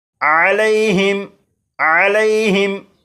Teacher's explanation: اب اس لفظ کو پڑھیں گے، اس لفظ کے آخر میں میم ساکن ہے اور میم ساکن کے بعد تو ہے، لہٰذا اس میم ساکن میں غنہ نہیں کریں گے، اور یہاں پر یالین ہے اس لیے لام کو بغیر کھینچے پڑھیں گے